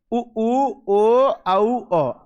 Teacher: उ ओ औ, ये सारे स्वर जो है वो व्रतमुखी